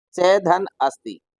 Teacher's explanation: च में जो अ है और अस्ति में जो अ है इन दोनों को मिलाकर हो गया आ। अब च में से अ को हमने निकाल दिया था और अस्ति के अ को निकाल दिया था।